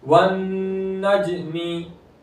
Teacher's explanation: जीम हुर्फ़े कलकला, आवाज लौटते हुए वापस आएगी